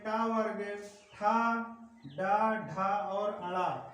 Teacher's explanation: मूर्धन्य यानी कि मुंह के ऊपरी छत का अगला भाग, इसका प्रयोग किया जाएगा।